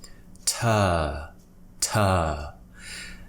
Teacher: this situation it's the earth sound so look at my mouth I have quite a relaxed mouth my tongue is kind of neutral in the middle of my mouth and it's a long vowel